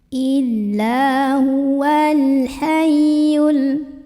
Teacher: alif lam qamariyah karena alif lamnya bertemu huruf qamariyah yaitu ha. Maka lam ini kita bunyikan dengan jelas.